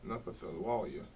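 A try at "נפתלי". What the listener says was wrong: Not the Pawalia. Not the Pawalia. Napathali. Napathalia. it don't got the wa.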